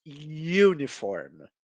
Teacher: gente teria dois sonhos de vogal juntos na mesma sílaba porém o som mais fraco que é o som do I na frente na fonética ele seria uma semivogal e uma semivogal na fonética considerado uma consoante então